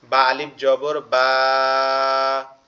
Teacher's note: জবরের বাম পাশে খালি আলিফ আছে, এজন্য এখানে এক আলিফ টান হবে